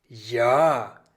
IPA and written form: ja (ja)